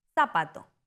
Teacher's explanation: En España la Z en zapato suena como parecido a la en think. En América Latina, la Z suena como s